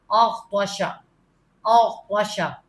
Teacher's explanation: غین تو اچھی طرح منہ بھر کے پڑھیں